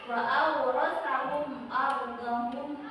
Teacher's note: Berarti ketika mim bertemu dengan alif, ya, karena alif ini adalah huruf idgham, maka tidak boleh didengungkan. Cara bacanya tidak boleh didengungkan. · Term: idhar syafawi